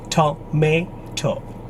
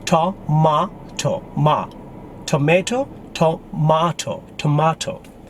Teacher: Is that middle syllable is American and British disagree now. For Americans, the syllable is may